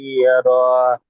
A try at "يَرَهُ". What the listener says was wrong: টান হবে না জি, শেষের অক্ষরটি টান হবে যদি আপনি উচ্চারণ করেন, আর যদি সাকিন করেন তাহলে র হা সাবার র, ইয়ারহ।